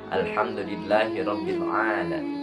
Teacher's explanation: dalam pengucapan huruf ba, tidak terdengar huruf mim ataupun ada sebagian huruf fa